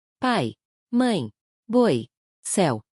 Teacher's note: Nessas palavras, o som final funciona como semivogal.